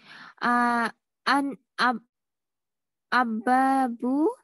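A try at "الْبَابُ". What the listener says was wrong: An. It doesn't have a shadda. Alif. Al-babu.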